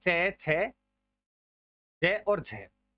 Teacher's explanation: स्पर्श का समय अधिक होता है और उच्चारण के बाद संघर्षी हो जाता है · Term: स्पर्श संघर्षी